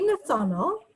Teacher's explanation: just make sure you get that emphasis on the second syllable